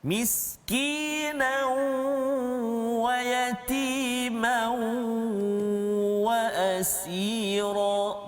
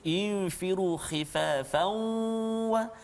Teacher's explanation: Maksudnya bunyi tanwin itu masuk ke dalam huruf waw ataupun masuk ke dalam huruf ya, contoh kita, ataupun masuk ke dalam huruf dal. Dia tak masuk secara sempurna, kan, masih ada tanwin dia, dan ada huruf waw dan berserta dengan dengung. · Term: idgham naqis